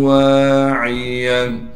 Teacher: واو کے بعد الف ہونے کی وجہ سے واو کو ایک الف کی مقدار کھینچیں گے